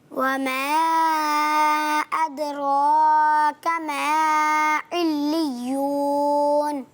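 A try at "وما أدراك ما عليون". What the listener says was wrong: ماشاءاللہ بہت اچھی کوشش کی، اچھی کوشش رہی ماشاءاللہ.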